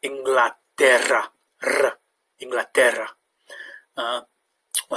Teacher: the double r has a bit of a trill sound · The double R has a bit of a trilled sound, so rather than Inglaterra, it's Inglaterra, R, Inglaterra.